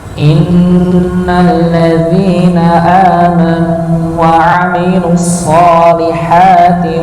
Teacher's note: dibaca ghunah musyaddadah, ditahan tasydidnya